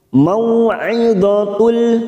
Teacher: hati-hati waw sukun jangan sampai dibaca o, tetapi setara huruf abjad u.